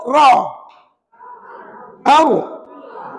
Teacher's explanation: perempuan kata ulama hanya belakang hujung lidah sahaja yang di digetarkan tapi ingat getarannya hanya sekali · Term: takrir